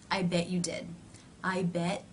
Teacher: up into position for the t i bet you did but rather than releasing air through the teeth the mouth simply moves in to the next sound